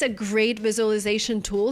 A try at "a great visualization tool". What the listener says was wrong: I cannot say a great visualization tool. The word is pronounced differently. We don't say visualization. We say visualization. So it's not the z sound like zebra, it's the j sound like usual, visual. We have the long oo sound plus the o. So we have the w sound in the middle linking the vowels.